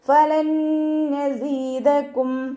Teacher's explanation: നൂൻ സാക്കിനയ്ക്ക് ശേഷം ഇദ്ഗാം ബിഉന്നയുടെ അക്ഷരമായിട്ടുള്ള നൂന് വന്നു. നൂനിനെ നൂനിലേക്ക് ലയിപ്പിച്ച് ഉണ്ണയോടുകൂടി ഓതി കൊടുക്കുക